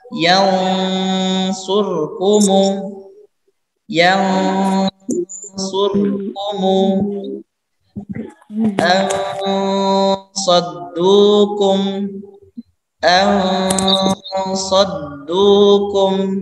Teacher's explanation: Baru kemudian masuk ke huruf sesudah nun itu, ya. Jadi kita dengungkan terlebih dahulu kira-kira ya sepanjang 2 atau 3 harokat, ya. Kemudian baru masuk ke huruf setelah itu, setelah nun atau tanwin tersebut. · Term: ikhfa hakiki